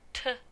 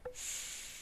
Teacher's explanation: compare t, a stop, with s, which is a fricative